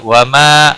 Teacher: الف مدہ ہے 1 الف کے برابر کھینچ کر پڑھیں گے